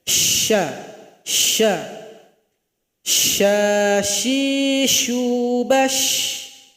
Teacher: Ah suara anginnya lebih banyak daripada sin.